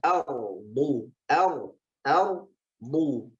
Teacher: Ro-nya tebal, do-nya tebal.